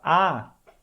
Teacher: Livre a voz sai junto com um pouquinho de ar e esse ar ele vai fluir por um canal mais amplo no caso da vogal a e quando você fala ah e a tua língua ela tá